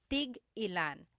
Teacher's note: So tig-ilan, when there's a hyphen in it, you have to have that glottal stop.